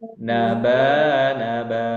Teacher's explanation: Ba ini ada alif dibaca panjang dua harakat.